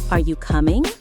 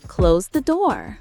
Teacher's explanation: in questions, the pitch goes up